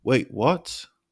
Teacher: your pitch Rises sharply on what